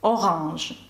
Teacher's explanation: це носовий звук але не звук О а звук а